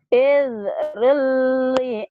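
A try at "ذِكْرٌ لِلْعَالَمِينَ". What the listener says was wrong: Bukan id. Enggak ada i-nya. Zikrul, bukan id.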